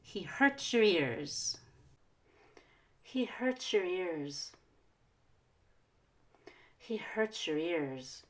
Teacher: we can reduce your because it's a pronoun so we want to make it really quick